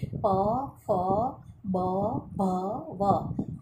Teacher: બે હોઠના ભેગા મળવાથી જેનું ઉચ્ચારણ કરી શકાય છે, માટે એ ઔષ્ઠ્ય વર્ણો છે.